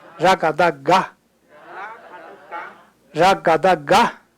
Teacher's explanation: 变成了嘎，就是浊音，不是卡，是嘎。